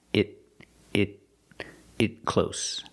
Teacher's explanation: Cutting it close. The t in it is a stop t because it's before a consonant.